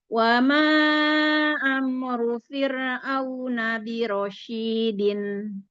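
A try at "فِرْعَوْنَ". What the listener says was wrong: Coba firnya bisa lebih tipis. Fir. Fir.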